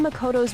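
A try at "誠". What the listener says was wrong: Why the hard T in Makoto? Everyone else has been Makoto-ing. It's Makoto.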